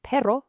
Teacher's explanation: And last but not least, the famous rolled R, or ere fuerte. That's that strong, vibrating, trilled sound. You'll hear it at the start of a word, or whenever you see a double R, like in the word perro for dog.